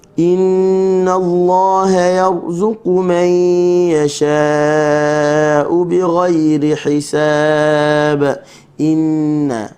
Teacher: nun bertasydid maka baca dengan gunnah dua harakat.